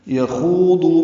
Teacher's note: یخوضو میں یا کو جلدی پڑھنا ہے، خا پر پڑھنا ہے، خو واو مدہ، دو ضاد واو مدہ، دونوں کو دو حرکات لمبا کرنا ہے، آگے واو سے ملا نہیں سکتے۔